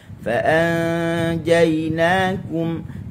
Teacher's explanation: dengung di sisi huruf jim